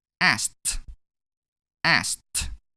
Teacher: The ending sound of the verb ask is k. It is in group 1. Therefore, we pronounce ed as t in this case.